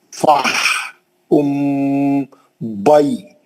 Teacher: لین اچھا کرنا ہے، یا ساکن سے پہلے با پہ زبر ہے